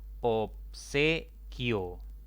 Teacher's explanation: Esta palabra tiene 3 sílabas. La mayor intensidad está en la penúltima sílaba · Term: sílaba tónica